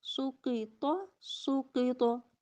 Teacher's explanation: طا زبر طا سوقیطا سوقیطا، طا پہ کلکلہ، دیکھیں اس پہ آواز پلٹ کے واپس آئی، طا کو ہلا دیا جھٹکا دیا